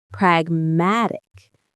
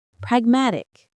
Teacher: The stress is on that middle syllable.